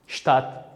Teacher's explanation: C bilan T ham agarda soʻz boshida keladigan bo'lsak, buni ham ko'pchilik holatlarda sh kabi talavuz qilamiz.